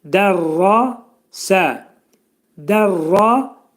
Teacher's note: Lakin ra hərfi bizdə qalın oxunacaq.